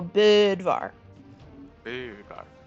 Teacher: Basically how the umlaut works is whatever vowel you're taking, you say it in like an E space. So you try to say an O, but with your mouth forming an E